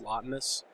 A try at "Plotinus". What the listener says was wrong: His name is not Lotinus. His name is Plotinus. You can't make the P silent if you're not also going to respect the E's at the end. Respect his E's.